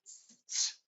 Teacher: That st is a stop sound, and our s is continuous. So, we can't hold on to the s because the t is going to stop it.